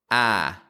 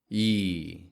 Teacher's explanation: we call these parts the pure vowel ah and the Glide e we combine those two positions together to make the sound I now what most non-native English speakers do is omit the Glide